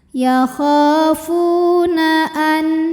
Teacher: halq halqi itu artinya tenggorokan jadi ini adalah huruf tenggorokan maka nun sukun masih dibunyikan dengan jelas artinya masih bunyi asalnya n dan tidak ditahan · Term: izhar halqi